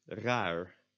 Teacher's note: most Dutch speakers, me included, would not pronounce the last R as the front or the back R, but as the English R. So I would not usually say raar, because that would be a lot of effort for me.